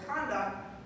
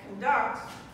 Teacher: So this word, if you say conduct, so the stress is on the first syllable, conduct, then it's a noun that means behavior. But if you put the stress on the second syllable, conduct, then it's a verb that means to lead.